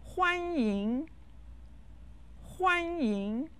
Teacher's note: let's learn the phrase is said with the first and the second tone